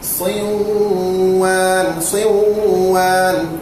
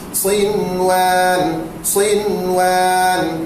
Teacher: Tapi tuan-tuan sekalian, kalau ikutnya kita kena baca siwan, siwan. Dikecualikan idgham, jangan idgham. Mesti kita kena baca dengan izhar mutlak, iaitu sinwan, sinwan.